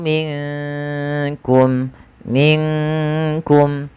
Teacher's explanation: minkum nunnya samarkan ke huruf Maaf huruf Kaf yang di mana Kaf makhrajnya dari pangkal lidah kita beririsan dengan langit-langit yang ada di atas